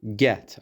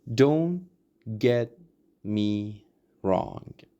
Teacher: when we have T at the end of a word, we change it into a held T, okay? So we just try to hold that.